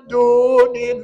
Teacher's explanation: alif lam jalalah tarqik nipis